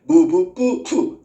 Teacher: 입술과 입술 사이에서 소리나는 게 무부, 뿌, 푸 얘가 모두 입술 소리다